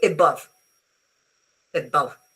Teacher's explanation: Uh you find it in English is one I think is the most common sound in the English language because it's the sound of any vowel when I decide not to put any stress on them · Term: unstressed vowel